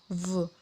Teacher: Jadi bukan V ya, tapi pengucapannya V dengan ada getaran dari area tenggorokan V dan mulut dibulatkan